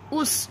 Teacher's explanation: हैं। For example आप ले लें हमज़ा पेश सौद उस, तो हमज़ा में जब पेश आई है तो आपके होंठ गोल होंगे